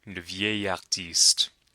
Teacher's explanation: Notice the liaison with vieille. It's not a L sound, it's a Y sound.